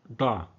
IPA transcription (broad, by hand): ɖ